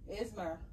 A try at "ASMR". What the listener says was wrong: ASMR. No, ASMR. That's how you pronounce it. No, you have to say it with a S, not a Z.